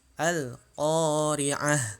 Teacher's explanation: ketika waqaf maka di sini ta marbutonya dia berubah menjadi huruf ha